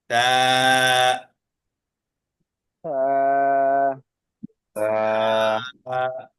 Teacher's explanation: জিহ্বার যে আগাটা আছে এই আগাটা উপরের দুই দাঁতের আগাতে লাগাবো। জিহ্বার আগা উপরের দুই দাঁতের আগাতে লাগাবো, আর একালিক টেনে পড়বো। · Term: থা